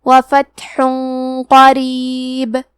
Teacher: قاف حروف الاخفاء میں سے ہے تو ہم یہ حکم کو غنہ کے ساتھ ادا کریں گے۔